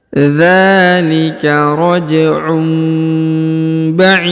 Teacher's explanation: huruf tanwin harakat UN bertemu dengan ba maka ditahan dan didengungkan huruf tanwinnya unnya berubah menjadi mim ya huruf dipanjangkan boleh dua